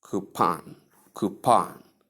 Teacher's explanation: pronounce coupon with a long ooh sound at the first and short o sound at the ending